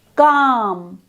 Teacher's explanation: This is therefore a back vowel sound. The highest point of tongue elevation is towards the back of the mouth, below the soft palate.